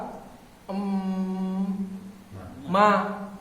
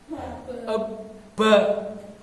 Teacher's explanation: Jadi ba sama ma itu adalah huruf bibir tertutup ya.